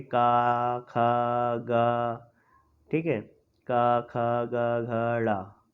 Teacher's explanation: तो पहले का वर्ग जो आ रहे हैं, ये जो का वर्ग है हमारा, ठीक है दोस्तों, ये जो हमारा का वर्ग है, का खा गा, ठीक है, का खा गा घड़ा, ठीक है, ये जो है हमारा का वर्ग, इसको बोलते हैं कंठ्य। कंठ्य क्यों बोलते हैं? क्योंकि ये हमारे गले के कंठ से आवाज आती है।